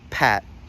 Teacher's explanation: when we start a word like pat, that's by default aspirated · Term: aspirated consonants